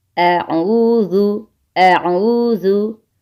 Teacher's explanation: बहुत ख्याल रखना है कि हमज़ा और आइन की आवाज़ में फ़र्क रखना है। हमज़ा गले के नीचे वाले हिस्से से अदा होता है और आइन गले के दरमियान से अदा होता है